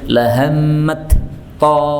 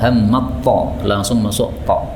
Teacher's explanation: Jadi tidak boleh dibaca tak dengan jelas. Taknya lebur masuk pada ta. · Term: idgham